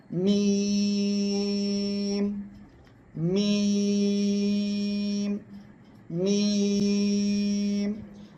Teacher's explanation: এই মিম অক্ষরটি উচ্চারণ হবে এই দুই ঠোঁটের বাইরের শুকনো জায়গা থেকে